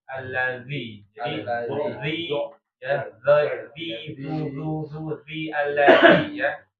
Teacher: Jadi lidahnya harus dikeluarkan. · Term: zal